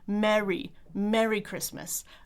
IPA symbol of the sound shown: ɛ